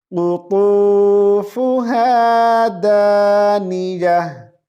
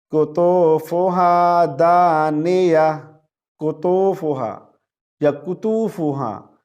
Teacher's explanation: क़ाफ को मोटी आवाज से पढ़ेंगे, ता को मोटी आवाज के साथ पढ़ेंगे।